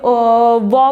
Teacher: उसके बाद हमारा दंत और अष्ट, जैसे व बोलेंगे तो व जो है दंत जो है हमारे ओष्ठ को मतलब होठ को टच करता है, तो वो है हमारा ये व।